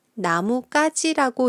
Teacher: 그런데 이 나무 가지를 붙여서 읽으면 한국인들은 나무가지라고 읽어요. 뒷말의 기역이 쌍기역으로 소리가 나네요